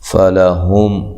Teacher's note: لحا، نون تنوین کا اخفا ہے مع الغنہ، باریک اخفا ہے۔ فلہم، ہا کو اس کے مخرج سے نکالنا ہے، میم ساکنہ کا یہاں اظہار ہے